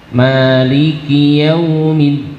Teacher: Kemudian yaumiddin, dalnya ditekan.